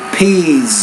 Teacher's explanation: The second sound, the S at the end, because it comes after a vowel, it's actually going to be a Z. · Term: Z sound